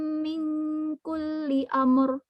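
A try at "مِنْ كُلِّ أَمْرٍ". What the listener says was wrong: أمر بدون قلقلة في الميم. أمر.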